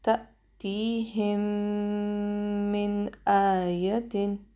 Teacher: هم دلته پر ها زیدی د میم ساکن راغلی دی، بیا میم مشدد راغلی دی میم ساکن بعد. دلته به ادغام شفوي ادا کوو، 2 سکنډه به وخت ورکوو، غنه به هم کوو